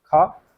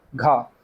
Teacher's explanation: क वर्ग में दूसरा है ख और चौथा वर्ण आता है घ तो ये दोनों वर्ण जो होते हैं ये महाप्राण व्यंजन के अंतर्गत आते हैं